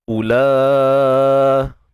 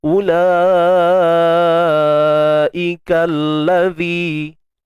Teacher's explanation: Ada pada tulisan tetapi tiada pada bacaan. Jadi U tu satu harakat saja dan La di sini 4 ataupun 5 harakat mad wajib muttasil. Panjang 4 atau 5 harakat.